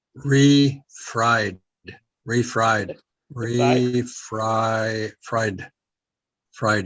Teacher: you just kind of barely say the d at the end of it